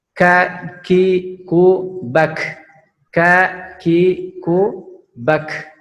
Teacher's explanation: Kemudian sifatnya huruf kaf ini adalah hamas, yaitu mengeluarkan nafas ya. Kemudian sama-sama syiddah dengan qaf, yaitu ditekan.